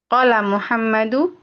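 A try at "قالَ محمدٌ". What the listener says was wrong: tanwin. Tanwin.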